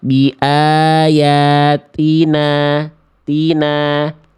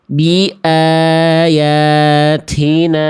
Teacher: Yang B salah karena terlampau berlebih-lebihan nafasnya ya. Yang awal nggak ada sama sekali, yang B terlalu berlebihan. · Yang A betul-betul tidak ada hamesnya, tidak ada percikan nafasnya, betul-betul nggak ada, nggak boleh juga.